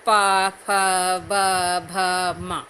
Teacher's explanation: अब सबसे लास्ट वर्ग है प वर्ग। प वर्ग का उच्चारण हम होठों की सहायता से करते हैं।